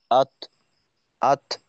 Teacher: কিন্তু অবশ্যই থাকতে হবে। যদি এভাবে শেষ হয়ে যায় আত আত শেষে দুর্বল হয়ে একটু বাতাস বের করে দিলাম